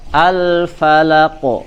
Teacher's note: sebagaimana huruf qaf dan ta itu dalam kondisi fathah, maka dia dibaca tebal. Maka pantulannya pun terdengar ya, harus mengikuti sebagaimana dia dalam kondisi fathah ya.